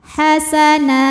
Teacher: Na jika berhenti hukumnya mad iwad sebab ada baris tanwin fathah yang diwaqafkan atau diberhentikan. Cara bacanya panjang 2 harokat.